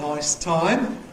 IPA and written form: ˈnɒɪs ˈtɒɪm (nice time)